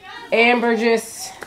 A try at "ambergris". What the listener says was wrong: Ambergris. No, don't pronounce the S.